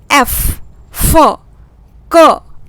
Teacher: अनवॉइस्ड sound, इनको बोलते समय कोई वाइब्रेशन थ्रोट पे नहीं हो रहा है, इनके प्रोनाउंसिएशन के लिए लिप, टंग और टीथ की ज़रूरत हो रही है।